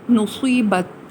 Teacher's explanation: تا ساکن ہے مگر یہ قلقلہ حروف میں نہیں ہے اس لیے اس کو منہ میں دبا لیا گیا ہے